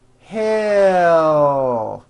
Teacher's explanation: the sound of the L comes from the movement of the tongue rising. It does not come from the placement of the tongue, but from the actual movement.